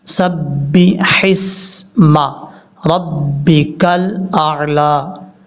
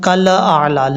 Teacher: بعض اوقات لوگ پڑھتے ہیں کل اعلی، لام میں کلکلا کرتے ہیں، لام میں کلکلا نہیں کرنا۔ لام پہ جب زبان لام کے مخرج میں لگے تو وہیں پہ رک جائے، آگے حمزہ کو ادا کرنا ہے۔